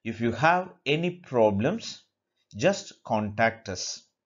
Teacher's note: The first part or the conditional part will take the rising intonation, whereas the consequent part, so the fulfilling part will have the falling intonation.